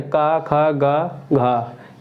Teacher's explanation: कंठ से बोले जाने वाले वर्ण